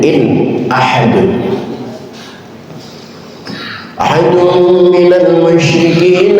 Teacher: nun mati ketemu hamzah, hukumnya idhar. Idhar artinya jelas, jelaskan suara nunnya.